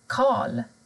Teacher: Men har du R och L tillsammans, då försvinner R. Till exempel värd, Karl.